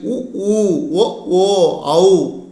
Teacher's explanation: வாய் திறக்கும் முயற்சியுடன் இதழ்களை குவிப்பதால் பிறக்கும் உயிரெழுத்துக்கள்